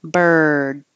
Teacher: it's really just the sound of the R, putting your tongue in the R position. Bird. And then stopping the airflow with a D.